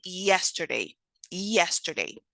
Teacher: voiced palatal and also an approximate specifically a Glide or semivowel